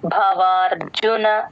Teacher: బ కి మహాప్రాణం ఉంది భవార్జునలో